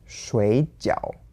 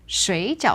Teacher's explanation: So 水, normally third tone for water, becomes second tone, third tone. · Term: tone change